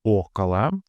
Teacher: The first o is stressed and thus fully pronounced